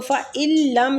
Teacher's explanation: نون ساکنہ کے بعد لام آ رہا ہے تو فَإِن لَّم، نون کو ہم چھوڑ کے لام کے ساتھ اس کو ملا کے پڑھیں گے